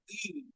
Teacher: The front part of the tongue moves towards the roof of the mouth, and you produce the sound e. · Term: front unrounded vowel